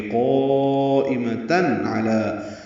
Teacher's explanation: تنوین کے بعد عین آنے کی وجہ سے تن میں اظہار ہوا ہے